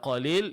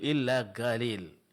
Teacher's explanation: seperti kebiasaan sebagian kabilah Arab atau orang Arab yaitu qalbuha ila harfi g merubah pengucapan huruf qaf menjadi mirip berbunyi huruf g